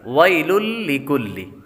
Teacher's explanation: آگے لام لام پر تنوین ہے, تنوین کے بعد لام حروف یرملون میں سے آ رہا ہے اس لیے غنہ نہیں کریں گے